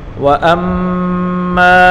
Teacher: حمزہ کو میم کے ساتھ ملا کر پڑھیں گے اور میم مشدد ہے اس کو غنہ کے ساتھ پڑھیں گے اور میم الف زبر ما اس کو ایک الف کی مقدار کھینچ کر پڑھیں گے.